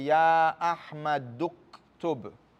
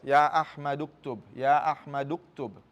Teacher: Remember this is Hamzatul Wasl. You don't pronounce it in the middle.